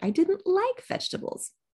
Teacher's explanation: vegetables is de-accented because we've already been talking about vegetables